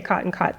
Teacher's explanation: Oklahomans also say cot and caught the same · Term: caught cot merger